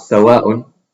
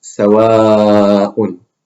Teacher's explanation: When one of these long vowels is followed by a hamza, you lengthen it to 4 units, twice its basic length of 2 units.